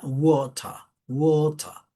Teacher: le da como el sonido de una O abierta